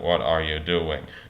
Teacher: Note that I had, without even thinking about it, some idea of like the high falling tone.